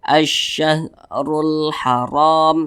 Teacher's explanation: kemudian di sini huruf Ra apabila dia memiliki tanda baca domah maka huruf ro itu dibaca tebal dibaca tabkhim sehingga pangkal lidah kita itu naik ke atas keangkat ke atas